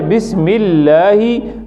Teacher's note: ज़ेर आ जाए बिस्मिल्लाही, लाम अल्लाह का बारीक पड़ता है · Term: लाम बारीक